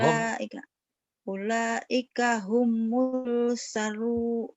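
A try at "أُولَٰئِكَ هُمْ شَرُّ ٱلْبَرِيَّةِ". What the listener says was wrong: bukan nggak ada humul humnya mati wa ulaika hum syarrul syarrul nyamber nyamber dan double ulaika hum syarrul bariyah pendek ulaika jangan ulaika hum ulaika hum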